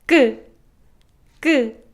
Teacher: you should tense up your throat like put more tension on your throat and speak it in a more high-pitched tone · No air comes out from your mouth because it's an unaspirated sound. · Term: double kkeok, double 기억